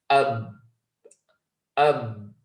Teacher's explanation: the 2 lips are coming together and we say ab, ab, and you can see the 2 lips coming together. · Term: shidda